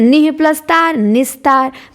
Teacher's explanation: विसर्ग के बाद त आया तो दंत्य स में बदल गया